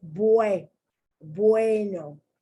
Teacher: the u takes on a w sound